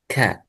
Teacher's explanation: فأقصى اللسان مع الحنك اللحمي والعظمي يخرج الكاف